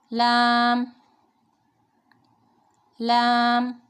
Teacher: لام زبان کا کنارہ اور دانتوں کی جڑ کے اوپر تالو کی جانب والے حصے سے یہ ادا ہوگا